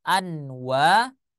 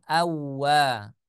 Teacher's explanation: an kemudian setelahnya bertemu dengan huruf ww misalkan wwya berharakat fathah maka nunnya suara nunnya tidak terbaca yang seharusnya dibaca anwa dia tidak dibaca anwa tetapi dibaca Awa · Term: Idam